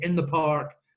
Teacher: When we say in the park, it all runs together. There's no separation in there whatsoever.